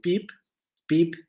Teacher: en esta situación del francés canadiense esa vocal se va a abrir por relajamiento · como es una sílaba trabada porque aparece al final una consonante se abre un poco la vocal entonces dirían pensó un poco como la vocal del inglés no